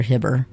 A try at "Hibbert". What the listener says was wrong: Hibbert. There's a T.